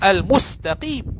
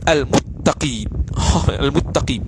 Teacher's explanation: Asalnya al-mustaqim, dia baca, dia tukar sin kepada ta, kemudian idgham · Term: al-arat